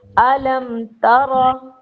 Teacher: را کے اوپر زبر ہے، را کو پر پڑھیں گے